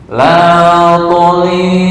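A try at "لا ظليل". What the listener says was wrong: Nah, itu hampir apa ya? Campur dengan ta. La dhali, la dha.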